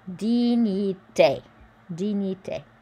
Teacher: So remember the GN is a ny sound. I is E. Dignité.